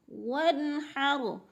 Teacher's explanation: ون کی نون کے آگے حا حروف حلقی میں سے آگے ہے تو ادھر غنہ نہیں ہوگا بلکہ اظہار ہوگا، ظاہر کر کے پڑھیں گے لفظ کو۔